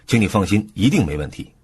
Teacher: 重音放在一定上，强调这件事的确定性